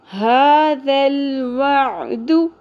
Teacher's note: عین کو وسط حلق سے ادا کرنا ہے باریکی کے ساتھ